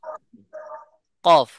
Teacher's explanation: কফের মাখরাজ হলো জিহ্বার গোড়াকে নরম তালুর সাথে লাগাইয়া